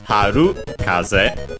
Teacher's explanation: the compound, which becomes accented on the ru